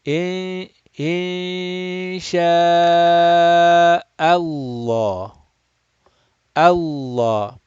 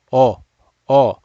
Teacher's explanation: Make sure that Hamza is done flat. Just because we are going to round this lam, do not round the Hamza. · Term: lamul jalala